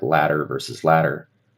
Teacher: a flap is just kind of a very light, quick, brief, arguably weak interruption in the flow that doesn't fully stop. It's just a quick tap or flap.